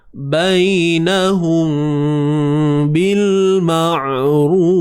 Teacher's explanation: Sembunyikan mim apabila bertemu dengan huruf ba. Bunyi bacaan dia macam mana? Tutup bibir bersahaja. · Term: Ikhfa syafawi